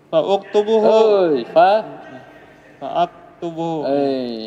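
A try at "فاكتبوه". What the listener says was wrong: Hamzah wasal. Fi'il amar hamzah wasal tidak dibaca di tengah.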